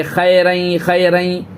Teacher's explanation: اور خی یہ یائلین ہے، دھیان دیں، خے نہیں پڑھیں گے، خیریں خیریں، مجہول پڑھنے سے بچنا ہے اپنے کو۔